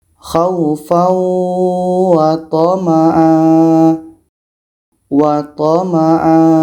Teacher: Tanwin atas dibuang satu, akhirnya menjadi panjang alif. mirip seperti mat tabi'i. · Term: mat iwad